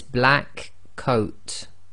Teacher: slight pause actually between the K and the C but generally we're going directly into the sound of the K into the sound of the C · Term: gemination